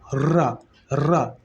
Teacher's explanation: जब आप रा वर्ण बोलते हैं तो जिह्वा जो है ऊपर जाके बहुत तेजी से लड़खड़ाती है, रा। ठीक है, तो इसी लड़खड़ाहट को लुंठित कहते हैं। · लुंठित या फिर प्रकंपित बोलते हैं इसको, लुंठित या फिर प्रकंपित बोलते हैं। जिह्वा बहुत तेजी से कंपित हो रही है तो प्रकंपित बोलते हैं